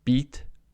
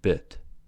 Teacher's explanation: beat and bit, peach and pitch are contrasted by the vowel sounds being tense in the first words but lax in the second